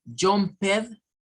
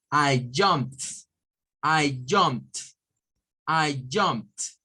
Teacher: Pero si lo pronunciamos como jumped, está mal. Porque este verbo no se debe pronunciar con el sonido ed, sino que se debe pronunciar con el sonido de una T